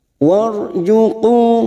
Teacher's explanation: ada ro sukun yang didahului fathah, namanya ro tafkim, kita baca tebal